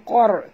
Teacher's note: Min qar. Qaf tebal. Jangan baca min kar. Bukan kar tapi qar.